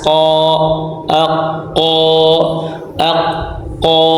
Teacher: sebelum walqu [Musik] aqsaniualu asal dan huruf q tempat nya keluar tempat keluarnya dari pangkal lidah yang membentur langit-langit atas